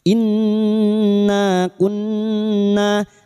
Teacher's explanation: nun yang bertasdid masing-masing kita dengungkan selama sama tiga harakat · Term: gunna syadda